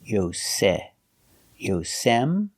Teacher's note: using the S sound plus the short E, like egg.